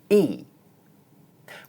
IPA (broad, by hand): iː